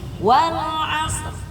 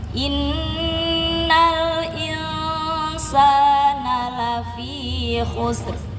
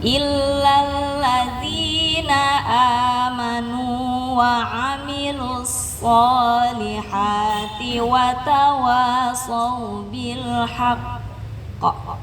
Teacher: Jadi lagunya pertamanya tinggi wal asr, yang kedua nada kedua innal insana lafi khusr, nada ketiga turunkan illal ladzina amanu wa amilus solihati wa tawasau bil haqqa.